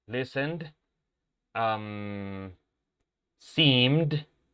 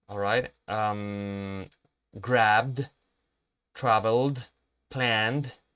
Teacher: Todos estos verbos terminan con un sonido consonante sonoro